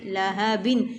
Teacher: لا ہا زبر ہا لاہا با دو دے بن لاہا بن ہا جو ہے یہاں پر سینے سے نکالا جائے گا حلق والا نہیں ہے